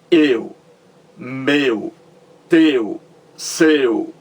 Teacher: é aberto quando você disse eu é fechado você percebe aqui a boca ela se fecha mais quando você diz eu meu teu seu é fechado